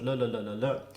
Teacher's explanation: it's technically an alveolar sound because you're using the tip of your tongue against um the bit of let's say flesh just behind your upper teeth which is called the alveolar ridge aviola ridge so la la